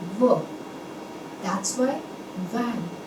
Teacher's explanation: During the production of this V sound, our upper teeth is going to touch the lower lip